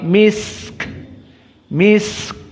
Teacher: sinnya agak lama karena dia rokhawah